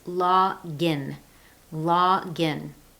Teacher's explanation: The pronunciation with that linked consonant to vowel is log in.